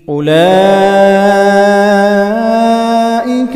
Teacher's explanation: اولئک مد متصل واجب 5 الف کے برابر کھینچ کر پڑھا جائے گا